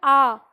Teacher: तो जब हम बोलते हैं आ तो पूरा मुंह खोलते हैं हम